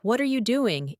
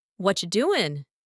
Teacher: native speakers rarely say, What are you doing? in full. Instead, it comes out like, What you doing?